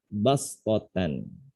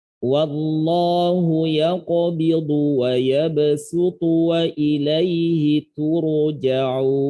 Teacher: tanda sin di atas sod menunjukkan huruf sodnya itu harus dibaca sin